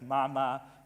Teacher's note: the word for mother has these bilabial sounds, meaning sounds produced with both lips together